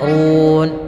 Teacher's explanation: Kemudian run, ini rohnya tebal lagi, yaitu karena huruf ra berharakat dhammah, maka dia rohnya kita baca dengan ra tebal